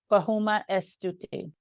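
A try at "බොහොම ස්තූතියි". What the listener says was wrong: You don't have to pronounce the E as much. Try to just not pronounce the E as much. So Stuti, E silent, yeah. E.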